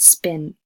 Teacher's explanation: So I want you to hold up your hand in front of your mouth, the back of your hand, and say the word spin. You shouldn't feel too much breathiness against your hand.